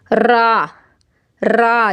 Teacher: आ जाएगा इसके बाद है र रा भी लिसानी मखर है रा भी हर्फ तरफ है जुबान की नोक और मुकाबिल के तालू से अदा होता है · है उसको बिल्कुल उसके ऊपर तालू में टच कीजिए रा रा जब भी आप कहेंगी तो जुबान की जो पॉइंट है वो ऊपर तालू में रगड़ करेगी